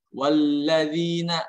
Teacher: lam tasydid bukanlah huruf yang dibaca gunnah. Kemudian zal di sini, huruf zal dalam pelafalannya lidahnya keluar sedikit ya, nggak boleh wallazina, nggak boleh. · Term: alif lam qamariyah